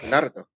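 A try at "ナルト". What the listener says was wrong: Naruto. No, you gotta get the R right. Roll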